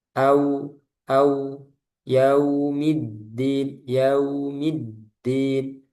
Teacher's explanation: Wau sukun sebelumnya ada fathah itu di dilinkan, dilembutkan, dilemahkan. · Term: sifat lin